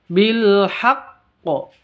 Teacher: huruf qalqalahnya kalau ada tasydidnya berarti ditahan 2 harokat terus dilepas beserta qalqalahnya. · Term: qalqalah kubra